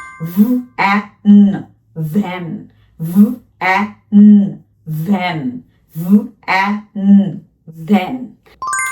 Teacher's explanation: উপরের পাটির দাঁত নিজের ঠোঁটের নরম অংশে লাগিয়ে উচ্চারণ করতে হবে